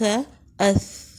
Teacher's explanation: اس میں ہمس ہوتا ہے، جب مخرج پہ جاتے ہیں تو آواز جاری رہتی ہے۔